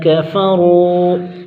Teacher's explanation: کفروا، قاف کو باریک کریں گے، مستفیلہ کا حرف، را موٹا، را کے اوپر پیش ہے اور واو مدہ ہوگا، ایک الف کھینچ کر پڑھیں گے